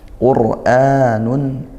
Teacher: ro sukun didahului dommaah dibaca tafkhim tebalkan